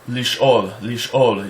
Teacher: Aleph is a glottal stop, meaning it's Aleph, like if you say the word lish'ol, you hear the stop in the middle of the word.